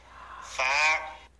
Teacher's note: আলিফ টেনে তারপরে দন্ত গইন ফা এক আলিফ পরিমাণ লম্বা হবে উপরের দাঁতের আঘাত নিচের ঠোঁটের পেটে লাগবে